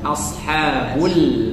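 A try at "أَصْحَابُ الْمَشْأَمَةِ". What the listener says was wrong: mash'amah. Nah, hanya langsung hanya itu dua harokat dan langsung masuk ke huruf selanjutnya, tidak ada sakta, jadi bukan ashabul. Nah, ada jeda itu namanya sakta.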